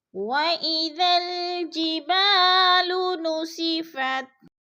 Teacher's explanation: خالی سے پہلے با کے اوپر زبر ہے تو الف مدہ، الف مدہ کو ہم نے 1 الف 2 حرکات کے برابر کھینچ کر یعنی لمبا کر کے پڑھنا ہے